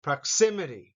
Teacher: the second syllable has the accent